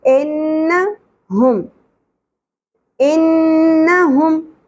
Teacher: نون مشدد غنہ ہوگا، زبر شارٹ رہے گی